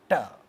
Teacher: The tip of the tongue hits teeth when we say ta, ta, and therefore this sound is called dental sound. The front part of the tongue goes up, curls back and unfolds hitting alveolar region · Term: retroflex sounds